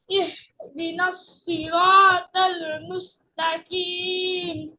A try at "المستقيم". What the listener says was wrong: মুস্তাকিম না, কাফ না, এটা কফ। মুস্তাকিম, ইহদিনাস সিরাতাল মুস্তাকিম।